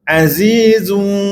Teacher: zu yang zu tu keluarkan hujung lidah sikit dan mulakan suara di hujung lidah di mulakan suara di hujung lidah tu dalam keadaan lembut, perlahan dan tiada tekanan yang kuatlah. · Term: bunyi berdesir